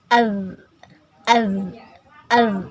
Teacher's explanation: Rasakan ujung lidahnya nempel ke ujung dua gigi seri atas. Az az dia senyumkan. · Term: dzal